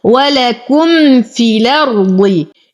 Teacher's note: يوجد نقل للإمام ورش ويسقط حرف المد بسبب التقاء الساكنين · وتم ضمة الكاف. لدينا ميم ساكنة وبعدها الفاء فالحكم إظهار شفوي بدون غنة